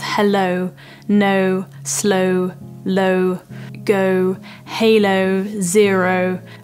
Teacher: this is actually a diphthong where there's actually almost two sounds within the vowel and the vowel changes over time. That's what a diphthong is essentially.